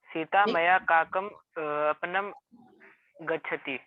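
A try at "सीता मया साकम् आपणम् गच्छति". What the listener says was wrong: तब काकम बोल रहा है, साकम ना, साकम मतलब सह काकम मतलब तो कौवे को हो जाएगा। साकम, सकार सा क म में हलन।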